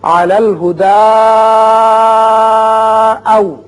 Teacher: اس کی وجہ یہ ہے کہ اگر آپ وقف یہاں آیت پر نہیں کرتے اور آگے حمزہ بشکل الف ہے اس لیے یہاں مد کر کے آپ ملائیں گے